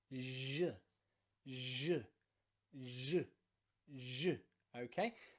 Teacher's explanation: it's nearly the same mouth position as the ch in words like chat or chip okay but this time we're voicing it